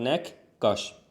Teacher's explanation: Nəqqaş sözü kök daxilində gəlib yenə kq olacaq.